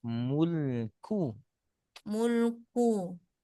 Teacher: baca mulku saja tipiskan lam tipiskan kaf